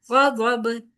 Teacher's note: با یہاں پر کیونکہ ہم ساکن کر رہے ہیں وقف کی صورت میں، لہٰذا قلقلے کا ساتھ پڑھا جائے گا